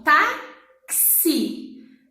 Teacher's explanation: Eu escuto o som do T, do A, do KS ou do CS e o I.